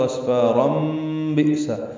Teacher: تنوین کے بعد با آنے کی وجہ سے اقلاب ہوگا